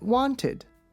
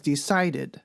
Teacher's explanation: When we add ed, we get wanted. So here the suffix ed is pronounced id, and it combines with the last T sound to make an extra syllable, tid. This is also true for the verb decide.